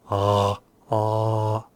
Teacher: If you bring the base, the root of the tongue, way back, the restricted airflow makes the sound. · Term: pharyngeals